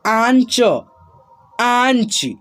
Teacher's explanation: जो शब्द हम लोग पढ़ते हैं नाक और मुंह के मेल से उच्चारण होता है उसका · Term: चंद्र बिंदु